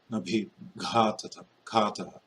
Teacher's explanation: And that's a GH. That's ga. It's voiced and aspirated. Bhi is also aspirated and voiced.